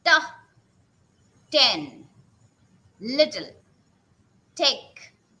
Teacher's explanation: Okay, so unvoiced sounds, just what happens, can't feel anything in your vocal cords, means your vocal cords are not going to vibrate when you are going to produce these unvoiced consonants